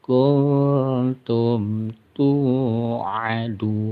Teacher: nun mati bertemu ta disamarkan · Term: ikhfa